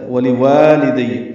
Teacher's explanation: واو لام کو جلدی پڑھنا ہے، پھر واو کو 2 حرکات لمبا کرنا ہے